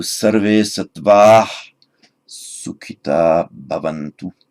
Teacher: this visarga, this H at the end of sukhita ought to be dropped. Correct, it should, because it's followed by a long ah, followed by a voiced consonant.